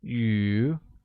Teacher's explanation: is pronounced with the mid rising tone